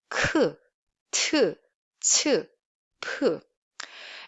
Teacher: And if you add one more stroke to plain sound, it becomes aspirate sound. And these are always voiceless sound and pronounced with a strong puff of air.